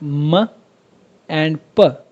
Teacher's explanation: अब जब आप ये साउंड्स प्रोड्यूस करेंगे म हो गया या फिर प हो गया या फिर ब हो गया, जब आप ये साउंड्स प्रोड्यूस करेंगे तो आपके जो दोनों लिप्स हैं अपर लिप और लोअर लिप ये दोनों एक दूसरे को टच करेंगे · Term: बायलेबियल